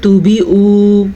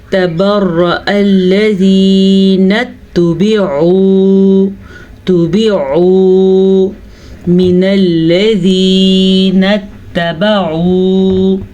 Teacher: استبرأ الذین اتبعوا من الذین، اچھا جی، عین کے مخرج کا دھیان رکھنا ہے۔ اکثر لوگ عین کو نرم پڑھتے ہیں تو وہ حمزہ بن جاتا ہے